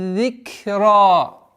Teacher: Здесь ра твердое произношение и с удлинением в размере 2 огласовок.